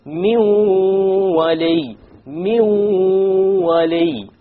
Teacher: we drop the noon because the waw is of the letters of idgham with ghunna.